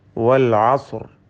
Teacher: വാവിന്റെ ഉച്ചാരണം വരുന്നത് രണ്ട് ചുണ്ടുകളിൽ നിന്നാണ് മറിച്ച് മലയാളത്തിലെ വാ പോലെ താഴെ ചുണ്ടും മേലെ പല്ലുമല്ല രണ്ട് ചുണ്ടുകൾ ചേർത്തു വെച്ചുകൊണ്ട് വൽ അസ്ർ എന്ന് ഉച്ചരിക്കേണ്ടതാണ് അൻ പ്രത്യേകം ശ്രദ്ധിക്കുക